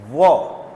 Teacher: व में नीचे का होठ ऊपर के दांत को टच करेगा